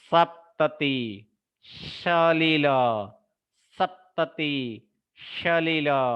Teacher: तीसरा जो है जिसमें दांत, ये दांत की, जीभ और दांत का, दांत के साथ उच्चारण है, वह है दंत स